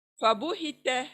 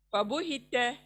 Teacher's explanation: अच्छा, यहाँ पर त को मोटा मत करें, क्योंकि त को मोटा करेंगे तो की आवाज आएगी, तो इसलिए ये त हमें पतला पढ़ना है। फबुहित, त यानी मुंह चौड़ा होगा जब ये अदा करते हम, फबुहित।